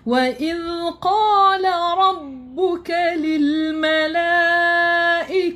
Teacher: Zal kita kena guna hujung lidah. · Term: huruf zal